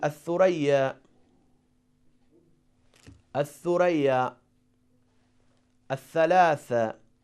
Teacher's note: So we don't pronounce Lam, but we pronounce letter Tha with Shadda. So Tha is one of the letter of Shamsi.